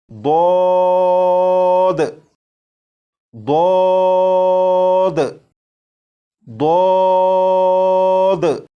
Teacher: جب آپ اس حرف کو پڑھنے سے پہلے زبان کی کروٹ کو اوپر کی داڑھوں کی جڑ سے لگا لیں گے، اس کے بعد آواز کو موٹا کر کے اس حرف کو پڑھیں گے تو یہ حرف بالکل درست پڑھا جائے گا، جیسے ضاد ضاد ضاد۔